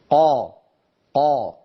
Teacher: بينما الصورة التي في وسط اللوحة نعم الحرف مستعل ولكنه ليس مطبقا، مستعل ولكنه منفتح، قا قا، ليس هناك انحصار للصوت